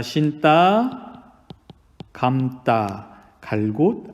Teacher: 기본적으로 예사소리들이 된소리들로 바뀌고 있습니다